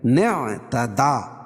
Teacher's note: فمن اعتدى لفظ ہے، اور وصل کی صورت میں یعنی ملانے کی صورت میں یہ الف جو ہے حذف ہو جائے گی، ٹھیک ہے؟ حمزہ حذف ہو جائے گی، نون کو عین میں ملائیں گے